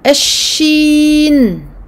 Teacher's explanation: Milieu de la langue donc, vers le milieu du palais, mais on ne touchera pas le palais. On laissera l'air s'échapper. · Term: lettre shin